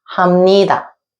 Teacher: the Bieup sound is nasalized and makes a mieum sound